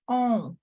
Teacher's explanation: it's coming through nasal passageway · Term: nasal sound